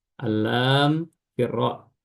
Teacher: diidghamkan masuk, ya, lam ke ra masuk